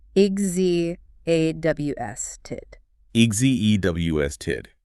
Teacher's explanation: EXHAUSTED. The H is silent and the X takes on a voiced G and Z sound.